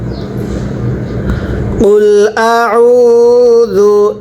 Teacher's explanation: এই আইনটা উচ্চারণের সময় গলার মধ্যে চাপ দিয়ে পড়তে হবে